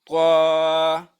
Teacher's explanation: طوا به موږ ادا کوو د ژبې د سر او بره مخامخ دوو غاښونو د ویښونو نه